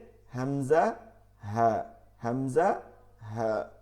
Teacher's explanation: হালকের শুরু হইতে হামজা হা